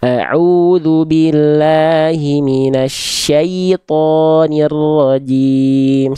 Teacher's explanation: jangan sengau pada saat bagian syai